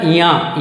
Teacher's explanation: इया भी बोलेगा तो नाक से निकलेगा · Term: नासिक के वर्ण